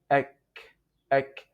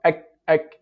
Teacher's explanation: If you put your palm in front of your mouth, you find this air flowing, touching your palm. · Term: al-hams